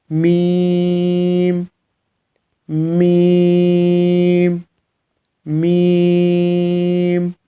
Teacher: میم کے لیے آپ اپنے دونوں ہونٹوں کو آپس میں ملائیں گے۔